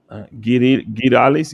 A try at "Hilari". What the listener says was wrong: There's no S. Where do you see an S? Gilari. Gilari Caressa. Jalari Caressa.